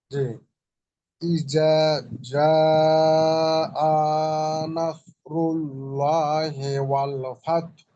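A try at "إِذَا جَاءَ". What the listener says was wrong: হামজাতে একটু টান হয়ে গেল। যা আ নাসরুল্লাহি, আপনি আ বলে থামেন, থামলেও যেন টানটা না হয়। বলে কিন্তু আপনি টান দিয়ে ফেলছেন। আ বলে থেমে যান। ইজা যা আ, এইভাবে।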